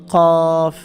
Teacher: জিব্বার গোড়া থেকে উচ্চারণ করতে হবে এটা।